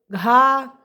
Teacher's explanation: महाप्राण ध्वन में व्यंजन में उच्चारण में ह का जैसी ध्वन रहती है और स्वास अधिक मात्रा में निकलती है